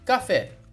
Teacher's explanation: o fé é a última sílaba, a mais forte, então por isso é oxítona.